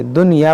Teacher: نون ساکن میں غنہ نہیں بلکہ اظہار کریں گے، ظاہر کریں گے، دنیا پڑھیں گے. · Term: اظہار مطلق